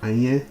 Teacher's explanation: So we start off with anye, a low tone and a high tone.